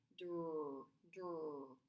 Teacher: Your tongue is on the top of your mouth, and then you push it out for the R.